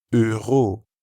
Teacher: that French r sound that comes from the back of the throat.